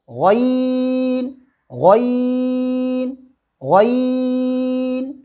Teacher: عین، زبان کی جڑ کو حلق کی طرف مضبوطی سے دباتے ہوئے رگڑ کھاتی ہوئی آواز، باریک آواز میں کہیں گے عین عین عین۔ غین، زبان کی جڑ کو تالو کی طرف بلند کرتے ہوئے موٹی آواز میں کہیں گے غین غین غین۔